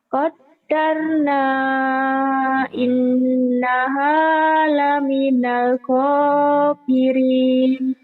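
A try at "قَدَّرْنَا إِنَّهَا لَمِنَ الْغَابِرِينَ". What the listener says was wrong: Lagunya nggak jelas itu. Qaddarna Qaddarna innaha laminal ghabirin.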